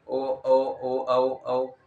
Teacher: बोलने में हमारा मुंह वृत के रूप में गोल होता है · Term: वृत मुखी